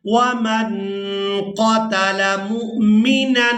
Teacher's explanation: یہاں نون ساکن پر اخفا کریں گے، یعنی نون کی آواز کو ناک میں چھپا کر ادا کریں گے